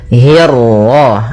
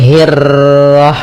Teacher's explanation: untuk huruf ra ketika dia berharakat tasydid itu atau dia berharakat sukun, dia ra-nya satu kali takrirnya. Tidak boleh banyak-banyak, tidak boleh hirrah, nah ini kepanjangan. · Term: ra tafkhim